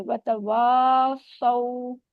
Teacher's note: क्योंकि अलिफ मद हो रहा है ना, हम इसको थोड़ा सा लंबा करेंगे